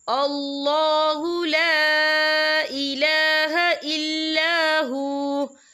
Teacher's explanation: اللہ کا نام پر پڑھا جائے گا کیونکہ اللہ کے نام سے پہلے زبر ہے